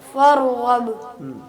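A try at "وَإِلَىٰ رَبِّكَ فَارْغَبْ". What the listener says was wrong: र को हिलाए मत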